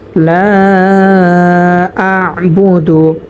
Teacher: আ'বুদু, এখানে আমরা কোনো টান করব না, শুধু লা এর মধ্যে টান করব। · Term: মধ্যে মুনফাসিল